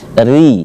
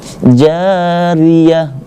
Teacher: Maka dia harus dibaca tipis, yaitu kira-kira lidah berada di ujung gigi, maka terdengar suaranya tipis, ri, seperti itu. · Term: tarqiq